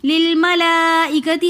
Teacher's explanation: کے اندر مد متصل ہو رہی ہے، تو اس لیے ہم للملائکتی ہم اس کو 3 الف کی مقدار کھینچ کر پڑھیں گے